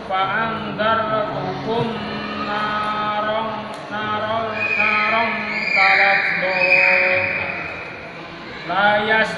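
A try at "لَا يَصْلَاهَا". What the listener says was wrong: panjangin lanya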